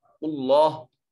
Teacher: اس میں جلالت کا ماقبل مضموم ہے، اس کو مفخم اور موٹا پر کر کے پڑھا جائے گا